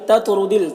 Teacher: تو کو پر پڑھیں گے اور تو میں قلقلہ کریں گے، را کو بھی پر پڑھیں گے